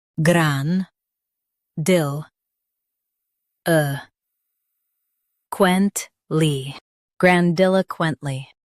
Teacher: Stress dil and keep quent smooth.